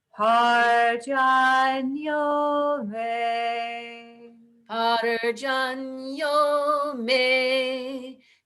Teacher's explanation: May is in the middle, not on the bottom.